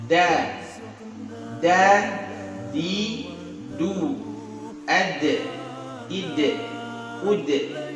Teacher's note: Jadi huruf da kena pangkal gigi seri atas ya, bukan kena langit-langit, kena gusi.